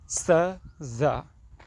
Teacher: it is alvular because tip of tongue touch to alvular ridge